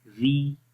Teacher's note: ٹھیک ہے، تو پھر پڑھیں گے را زیر ری. تو ری میں آواز باریک پڑھیں گے، اوپر کی طرف نہیں جائے گی، نیچے کی طرف ہی رہے گی.